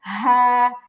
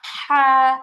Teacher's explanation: প্রথমটা হচ্ছে একদম গলার নিচে থেকে হ্যাঁ, আর পরেরটা হচ্ছে গলার মাঝখানে চাপ দিয়ে হ্যাঁ।